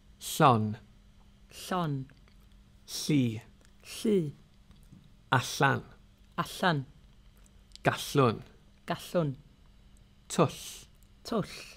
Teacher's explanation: Put your fingers on your Adam's apple and you shouldn't be able to feel any vibrations. Instead, there's a hissing kind of friction in your mouth as you hold your tongue in the L position. This isn't an easy sound to pronounce if it's new to you, so don't worry if you struggle to begin with, you can learn it through practice. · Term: double L